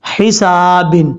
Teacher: جب سٹاپ کریں گے تو با کو ساکن کر دیں گے، سین بریک پڑھا جائے گا